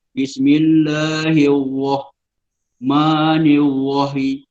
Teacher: Itu sebenarnya satu kelemahan juga dalam membaca Al-Quran. Huruf ra dimunculkan terlalu keterlaluan, dia akan jadi keluar huruf lain seolah jadi wah.